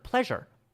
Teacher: The S sound, right, is a sound like a zh or a J sound.